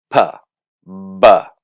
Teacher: you have to close your lips all the way to create it and then the air stops for a moment and then it's released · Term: stop consonant